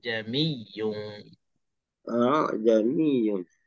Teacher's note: dia mudahkan, iaitulah dengan memudahkan hamzah yang kedua dengan menyebut separuh hamzah. Itu maksud mudah di sini, kita tak sebut betul-betul hamzah, kita sebut separuh je. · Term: tashil